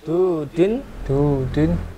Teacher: Maka vokal u ini akan dibaca panjang dua vokal.